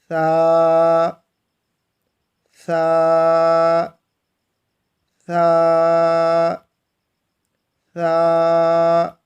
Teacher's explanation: زبان کی نوک کو ان 2 دانتوں کے کناروں کے ساتھ لگانا ہے اور اس کو نرمی کے ساتھ پڑھنا ہے۔